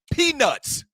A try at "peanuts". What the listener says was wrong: You have a T. When said it just a minute ago, he added it. He was like peanuts, but yours clearly sound like a phallus.